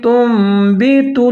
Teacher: نون ساکن ہے، اس کے بعد حرف آ رہا ہے با، تو یہاں پر ہم اقلاب کریں گے۔ اقلاب مطلب نون ساکن یا تنوین کے بعد حرف با آ جائے تو وہاں پر نون ساکن کی آواز کو ہم میم کے ساتھ تبدیل کر دیں گے، یہ ہے اقلاب کا قاعدہ۔